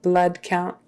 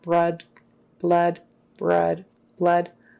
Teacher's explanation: make sure you get your l not brood count BR count make sure it's an L behind the teeth